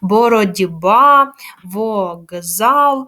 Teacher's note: глухі приголосні звуки перед дзвінкими в нас уподібнюються вони також стають дзвінкими